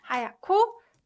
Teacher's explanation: And so when it's combined together, it's pronounced 하얗고, 하얗고, because 히읗 받침 combined with 기역 consonant produces 크 sound, right? 하얗고, 작아요.